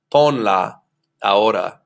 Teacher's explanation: the second to last syllable is that o and that's exactly where I want the stress to be